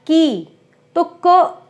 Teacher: क तो हमने बहुत थोड़ा बोला, और जो उसकी ई की मात्रा थी वो हमने बहुत लंबी बोली